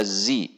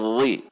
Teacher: Dhi, perhatikan tidak dibaca zi, tetapi dhi, karena ujung lidah harus keluar, torful lisan harus keluar dan ditempelkan di ujung gigi seri atas